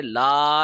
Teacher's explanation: لا کے اوپر الف مدہ کا قانون لاگو ہو رہا ہے کیونکہ لا پہ زبر ہے اور آگے الف آ رہا ہے, لا کو 1 سیکنڈ لمبا کریں گے, لا ایسے پڑھیں گے.